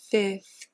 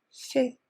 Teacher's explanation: I don't bother pronouncing that second F.